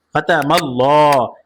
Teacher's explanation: এই আল্লাহ শব্দের লামকে মোটা করে পড়েছি